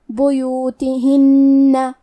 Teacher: من بیوتہن، کلمت بیوتہن میں با پہ اور یا پہ پیش ہے تو ہم یہ دونوں پیش کو برابر سے ادا کریں گے، آخری میں نون کی تشدید کو غنہ کے ساتھ ادا کریں گے